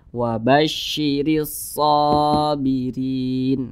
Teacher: dibaca panjang ini huruf Shad di atasnya ada Alif kecil maka huruf Shad dibaca panjang Mad thi'i panjangnya dua harakat atau kira-kira dua ketukan